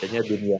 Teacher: Sebenarnya kaidahnya sudah idgham bigunah. Cuman kalau dunia itu bacanya dunia, enggak di idgham. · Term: idhar mutlak